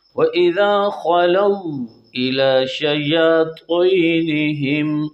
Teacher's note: تو کو خوب پوری زبان کو اوپر کے تالو کو لپیٹنا ہے، تب جا کے تو صحیح ادا ہوگا